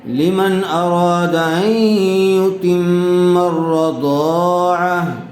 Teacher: تنوین کے بعد حمزہ آئی ہوئی ہے، اس لیے اظہار کا قاعدہ ہوگا، بغیر غننے کے جلد اظہار کر کے پڑھیں گے